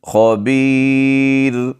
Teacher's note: خا کو موٹا پڑھیں گے، را کو جب وقف کریں گے تو پھر موٹا نہیں پڑھیں گے. اگر ویسے پڑھیں گے وقف کے بغیر پڑھ رہے ہیں آپ تو را کے اوپر دو پیش ہیں، پھر یہ موٹا ہی پڑھا جائے گا.